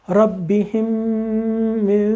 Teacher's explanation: ہم پوری ایک دم غنہ کر دیں گے اس کو، ہونٹ بند کیے، آواز ناک میں